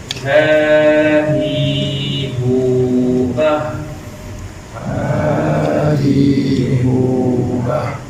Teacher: Ha bulat dia makhraj dia dikapit dengan lemah pada bahagian pangkal kerongkong.